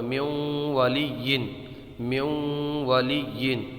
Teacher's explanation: نون ساکن کے بعد میں یرملون کا واو آ رہا ہے، اس لیے یہاں پر ادغام ہوگا یعنی گننا کر کے پڑھیں گے